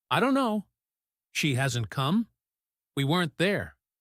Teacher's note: The negative part carries the stress.